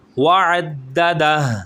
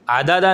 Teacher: مالا وعددہ، اب یہاں پر جب ہم رکیں گے وعددہ بنے گا، ہا کی آواز نکالیں گے